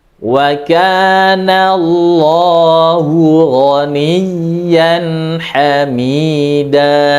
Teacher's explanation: Ghaniyan dinaberkan, ditinggikan suaranya